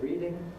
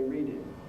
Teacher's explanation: sometimes they’ll say [ˈriːdɪŋ] and sometimes they’ll say [ˈriːdɪn].